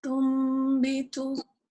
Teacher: Iqlab means to change the Noon Sukun to the letter Meme because the Noon is followed by the letter Ba. We would recite this with 2 counts of nasalization.